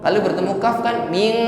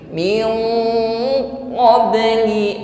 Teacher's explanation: Kalau bertemu qaf, karena qaf ini adalah isti'la, maka ketika berdengung ini dengungnya sudah menebal. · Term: ikhfa adna